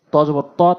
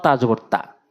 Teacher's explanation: ত টা মুখ একটু গোল হবে পুর হবে তা টা মুখ উসার হবে পাতলা হবে